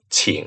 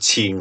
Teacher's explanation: most standard Mandarin will pronounce this as the third tone so I'm going to write that here in purple team third